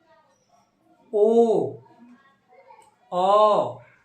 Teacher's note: অ নিম্ন মধ্য অর্ধ বিবৃত পশ্চাৎ কুঞ্চিত। · ও হচ্ছে উচ্চ মধ্য অর্ধ সংবৃত পশ্চাৎ কুঞ্চিত।